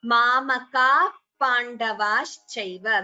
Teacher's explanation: we do not chant the visarga completely. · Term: upadhmaniya